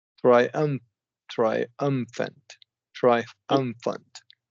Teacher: you want to emphasize the second syllable, triumphant.